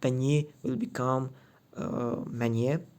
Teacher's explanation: it is assimilation in Turkic languages if the sound b comes with n, m, and ng. Also ny, it is becoming m.